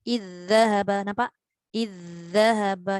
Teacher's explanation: Dia ada suara yang berjalan semasa nak masukkan zal yang pertama kepada zal kedua. Dia tak boleh kosong. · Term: rakhwah zal